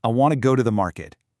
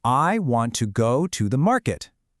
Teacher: In that stress timed rhythm, I'd say, "I want to go to the market." Did you hear how to and the almost vanish? They just get squeezed in there. · But Pakistani English is syllable timed thanks to the influence of languages like Udu. Here, every single syllable gets roughly the same amount of time, giving it this very distinct almost staccato machine gun-like rhythm